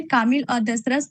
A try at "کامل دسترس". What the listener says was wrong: دسترس، یہاں غلطی بہت بڑی ہوئی ہے. کامل اور دسترس نہیں ہوگا، کاملو بھی نہیں ہوگا، کامل دسترس. سیدھے پڑھیے.